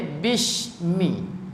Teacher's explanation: Huruf sin kalau kita baca dengan dekat dengan makhraj shin dia akan jadi bishmi